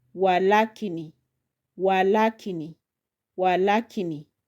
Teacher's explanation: Then the next word I'm going to put the emphasis on the third syllable la.